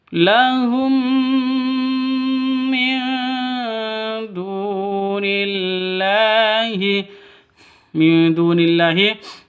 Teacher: nun mati bertemu dengan dal. Cara bacanya samar didengungkan siap-siap ke dalnya. Kenapa? Karena bacaan ikhfa haki ikhfa hakiki.